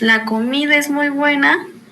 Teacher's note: cuando decimos la comida es muy buena, el tono tiende a bajar al final. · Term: afirmación